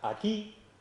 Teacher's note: por ejemplo en la palabra aquí realmente en la sílaba atómica lo que realizamos es una mayor intensidad una elevación del tono o altura y una mayor duración de la misma